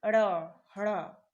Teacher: जिह्वा थोड़ा सा उल्टे मुड़ रही है, यानी ऊपर को मुड़ रही है और हल्का सा तालु को छूकर हट जा रही है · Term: उक्षिप्त व्यंजन